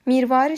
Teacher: Mirvari sözündə a qalın, i incə saitdir.